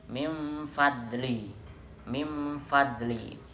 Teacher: membacanya harus jelas tanpa dengung, tanpa lebur. Mim fadli, mim fadli, mimnya dibaca jelas.